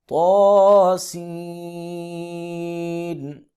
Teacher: طا کو 1 الف کے برابر اور سین کو 4 الف کے برابر لمبا کریں گے